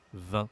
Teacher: On ne prononce pas le G et on ne prononce pas le T non plus. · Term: consonne muette